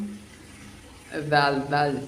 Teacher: दोनों दांतों के बीच में जुबान आता है